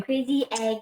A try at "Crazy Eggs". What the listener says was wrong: Not S, it's Z. Eggs.